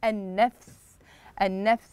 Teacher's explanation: اللام كتبت ولم تنطق والحرف الذي بعد اللام مشدد